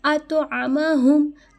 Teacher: عین کی آواز حلق سے ادا ہوگی